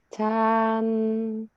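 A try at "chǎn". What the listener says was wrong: 不是，那个是第一声nada 1. Nada 3-nya gini. Chan.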